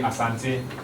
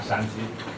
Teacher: the Gan people tend not to have this sound, the S sound, so they replace the S sound with a Sh sound.